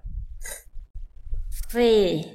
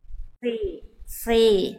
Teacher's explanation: kayak sama huruf S tapi dia pangkal lidahnya diangkat